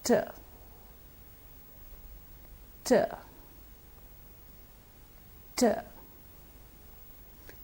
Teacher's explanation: These are made with the tip of the tongue striking the teeth ridge. The teeth ridge is the gums of the upper front teeth, the area inside the mouth which comes about here. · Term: alveolar sounds